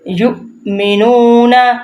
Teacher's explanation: الذين آتيناهم الكتاب يتلونه حق تلاوته أولئك یؤمنون، اب اولئک یہ مد ہے اس لیے لام کو ہم نے لمبا کیا ہے، اور یؤمنون کہ جھٹکا کیوں لگایا، ایک واو کے اوپر حمزہ ہے، حمزہ کے اوپر ساکن ہے، اس لیے ہم نے واو کو نہیں پڑھنا، ہم نے حمزہ ساکن کو پڑھنا ہے